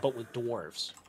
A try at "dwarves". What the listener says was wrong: Dwarfs, not doors. Your New York accent. Every time you say dwarf, it sounds like door.